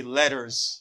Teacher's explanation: You hear the sound R before S. You say letters. You pronounce this S as Z sound.